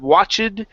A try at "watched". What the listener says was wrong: It's watched with a t at the end. Okay, almost. So pronounce the T. It's watched.